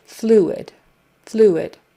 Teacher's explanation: Fluid, like the bird flew, and then id, fluid, fluid. With the accent on the first syllable, fluid.